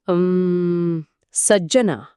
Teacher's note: चा आणि टाळूचा कसा वापर होतो ते पहा. अ सज्जना >> स या अक्षरावर जोडाक्षरामुळे एक नैसर्गिक आघात होतो.